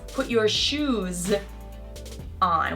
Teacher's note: we don't have any W Intruder between shoes and on if shoes ends in a z sound